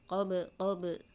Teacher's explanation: Qalqalahnya qalqalah sugra karena di tengah kata ya. Tetap berpantul tapi kecil.